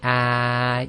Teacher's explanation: you'll notice your tongue goes almost completely flat all the way from the front to the back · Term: Fatha Alif